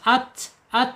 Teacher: berarti ta ada di asyidah ya. Asyidah tertahannya suara.